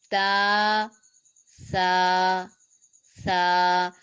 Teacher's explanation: इसी तरह सा जुबान की नोक और सनाया उलिया का सिरा, किनारा, सनाया उलिया के सिरे या किनारों के साथ जुबान की नोक जब टकराएगी तो वहां से सा अदा होगा। सा में नरमी है, सख्ती नहीं है, सीटी नहीं है, दांत नहीं जुड़ेंगे, बल्कि आहिस्तगी से, आराम से अदा होगा। · बस सा में थोड़ी सी मुश्किल होगी कि सीन की तरह ना हो, सख्ती ना हो, मोटा ना हो स्वाद की तरह। बस नरमी से और आराम से इसको अदा करना है और एक अलिफ के बराबर लंबा करना है, बा को भी, ता और सा को भी। · ता जुबान की नोक और सनाया उलिया यानी ऊपर वाले सामने वाले 2 दांतों की जड़ से जब जुबान की नोक लगेगी तो यहां से ता अदा होगा।